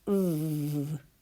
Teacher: we have our teeth on our bottom lip and we can feel vibration